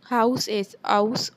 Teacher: Cockney, London, or England speakers might drop the h sound at the start of words